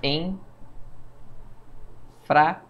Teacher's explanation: O N nasaliza a vogal anterior e não tem som, então não conta como um som.